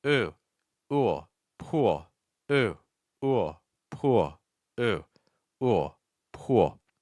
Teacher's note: this is the long vowel, so when we add the L, it's going to break into two parts. It's like ooh.